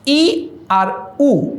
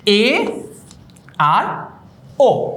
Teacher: ই আর উ উচ্চারণ করার সময় ঠোঁট যতটুকু খুলেছে তার চেয়ে এ আর ও যখন উচ্চারণ করছি ঠোঁটটা কিন্তু আগের চেয়ে একটুখানি বেশি খুলেছে। ঠোঁটটা আগের চেয়ে একটুখানি বেশি খুলেছে। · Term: অর্ধ সংবৃত